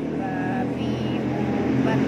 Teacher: Makhraj huruf ba terletak pada bibir atau asyafah. Cara mengucapkannya seperti huruf B, tidak disertai napas. Sifat hurufnya dibaca jelas atau jahar.